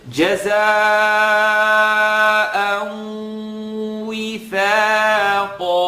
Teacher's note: We have the nasaling sound. I want you to hear, you have to hold it in your nose for a period of time.